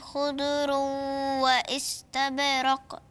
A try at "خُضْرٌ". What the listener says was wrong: الضاد مش عايزاها تلا لقلق منك مش عايزاها ان احنا نقلق لها